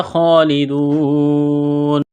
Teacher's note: خا کو موٹا کرنا ہے، جس طرح انسان گلے سے بلغم نکالتا ہے، خا کو نکالیں گے، ایک الف کے برابر کھینچنا ہے، کڑا زبر کی وجہ سے، واو ساکن سے پہلے پیش ہے، حروف مدہ واو ہے، الف کے برابر کھینچنا ہے، یہاں پر وقف کریں گے تو نون کو ساکن کریں گے۔